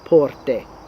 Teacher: you don't say porte and put a little y sound at the end you cut that off